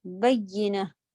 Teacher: या के ऊपर आपका मुशद्दद है। इसको अच्छा ज़ोर देके पढ़ना है शद्दा के साथ